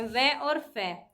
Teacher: दंतोष्ठीय निचले होठ व ऊपरी दांतों से बोले जाते हैं